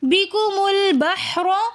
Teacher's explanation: بِكُمُ الْبَحْرُ، دو کلموں کے درمیان بِكُم اور البحر، ان دونوں کے درمیان میں حمزۃ الوصل ہے، جو کہ کلمے کے درمیان میں آنے کی وجہ سے ہم نہیں پڑھیں گے، بلکہ بِكُمُ میم کو ہم لام کے ساتھ ملا کر پڑھیں گے